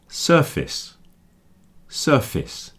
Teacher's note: Obviously this word is connected to face, face, but when I'm putting sir at the beginning, I'm moving the stress to the sir part, so the second part is contracting down. So surface, surface, it's like fis at the end.